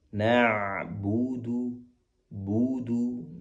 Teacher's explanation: Pastikan ain dari tenggorokan tengah lebih dalam